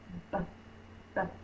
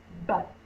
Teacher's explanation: Feel what your lips are doing. My lips are closed, and then I'm popping the air. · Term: B sound